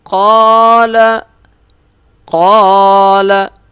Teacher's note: قاف موٹا بھی ہوگا ایک الف کے برابر کھینچ کے بھی پڑھا جائے گا